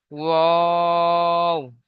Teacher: তিন আলিফ পরিমাণ টান দিতে হবে